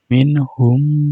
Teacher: Apabila ada mim mati bertemu dengan huruf mim, itu disebut bacaan idgham mimi. Cara bacanya mendengung,